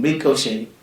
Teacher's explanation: We pronounce it as ricochet with the sound T silent because of its origin, which is French.